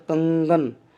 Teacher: उच्चारण के समय में जब हम बोलते हैं तो जो है कुछ हवा नाक से निकलती है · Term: अनुनासिक